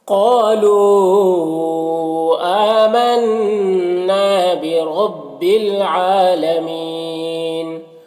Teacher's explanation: اس میں اس کو 3-4 الف کے برابر کھینچ کر پڑھتے ہیں، 3 سے 4 الف کے برابر کھینچ کر پڑھتے ہیں۔ آمنا حمزہ میں کھڑا زبر ہے، نون مشدد ہے، غنہ ہوگا اور الف مدہ ہے۔ · آمنا حمزہ میں کھڑا زبر ہے، نون مشدد ہے، غنہ ہوگا اور الف مدہ ہے۔ را کے اوپر زبر ہے، را کو پر پڑھیں گے۔ عین کے اوپر کھڑا زبر ہے، اسے ایک الف کے برابر کھینچیں گے، اور مین یہاں پر وقف کی صورت میں مد عارض وقفی ہوگا تو اس طرح سے پڑھیں گے۔